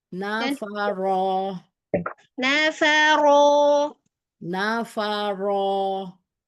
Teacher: Nafaro tebal-tebal aja tafkhimkan saja.